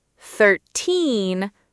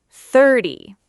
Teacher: Oh no, the secret is in the stress. For 13 numbers, like 13, the teen is long and high. For 30 numbers, like 30, the first part is strong and the end is short, sounding almost like a d.